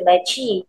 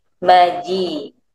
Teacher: Jadi kita tak boleh baca huruf jim ni dengan berangin. Tak boleh baca maci tapi maji.